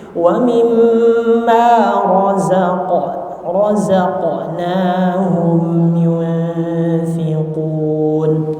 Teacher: Qalqalahnya di sini huruf qaf sesuai sifat dari huruf qaf, yaitu tebal atau tafkhim.